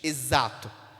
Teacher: o x nessa palavra exato tem um som de z